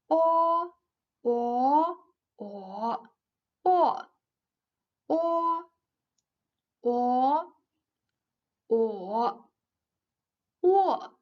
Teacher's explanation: The opening of the mouth is medium. The tongue position is middle high and slightly to the back. The lips are rounded. It sounds like o of orange.